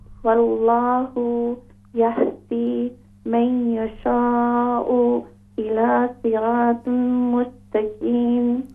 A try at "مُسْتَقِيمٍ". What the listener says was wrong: قاف کو موٹا کر کے پڑھیں الى صراط مستقيم